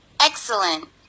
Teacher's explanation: Itu suku kata pertama yang harus ditekan.